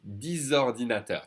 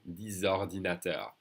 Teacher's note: we're going to connect the X as a Z sound with the next vowel, the O. 10 ordinateurs, 10 computers.